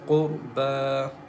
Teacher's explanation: And Ra is also thick here, and Ba has standing fatha. We stretch the sound for two counts as Qurba, and after Ba there is a Ya.